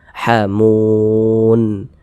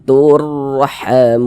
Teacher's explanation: Huruf nun kan tidak dibaca panjang. Karena berhenti tepat di huruf yang tidak dibaca panjang, hurufnya kita sukunkan, sehingga kita baca hamun.